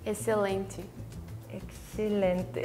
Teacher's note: We don't pronounce the X. It's just excelente. It's like an S. It's like an S.